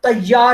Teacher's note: لفظ تیار میں ت کے بعد دوہرا مسوتہ واقع ہوا ہے